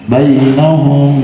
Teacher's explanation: Waja'alna dibaca panjang, mad tabi'i 2 harokat, alif sebelumnya fathah. Bainahum, kalimat bai itu mad lain ya sukun sebelumnya fathah